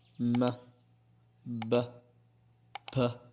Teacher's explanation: وهو التقاء الشفة العليا مع الشفة السفلى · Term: Bilabial